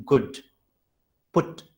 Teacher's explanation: The next sound is oo sound, rounded. The lips will get rounded to that oo sound, as in good, put, like that.